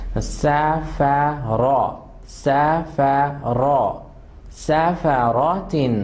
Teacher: جی صرف را جو ہے فل ماؤتھ ہے, یہاں پر صرف را فل ماؤتھ ہے, باقی سب لیٹرز شارپ ہیں